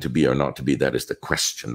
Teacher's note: feminine ending that little syllable that drops off at the end